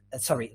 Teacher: your vocal folds your vocal cords are a bit apart so they let air come through without vibration